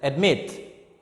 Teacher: So mit is the second syllable, the last syllable. We stress on the last syllable